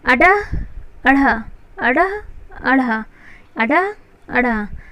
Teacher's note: उत्क्षिप्त, फेंक के, बहुत ज़्यादा फोर्स के साथ उच्चरित होते हैं। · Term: उत्क्षिप्त वर्ण